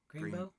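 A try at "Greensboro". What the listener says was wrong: Greenboro? Greenboro. It's called Greenboro, not Greenbow.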